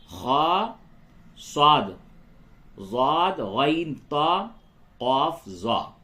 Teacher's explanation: یہ حروف موٹے یعنی منہ بھر کے اس کی آواز نکلتی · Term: حروف مستعلیہ